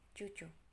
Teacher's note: bunyi berasal dari pangkal rongga mulut yang tersusun dan sifatnya mahmus atau samar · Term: Huruf C